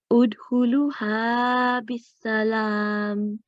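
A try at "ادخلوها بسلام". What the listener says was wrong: But huruf al-madda here, 2 seconds, and it's not bis salam, it's bi salam.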